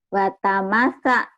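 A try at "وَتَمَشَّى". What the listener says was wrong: Shin atuh. Shinti. Shin.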